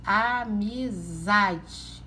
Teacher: O zá é a sílaba mais forte da palavra. Então, o zá é a sílaba tônica, certo?